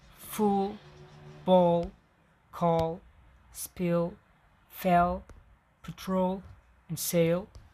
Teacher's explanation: when the letter L precedes a consonant or occurs at the end of a word, it is called dark L